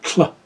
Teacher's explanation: The next symbol is what's called a barred lambda. The barred lambda makes a T-L sound. So it makes kind of a tl noise. So this is what's called a lateral sound. And we're also going to be using our alveolar ridge.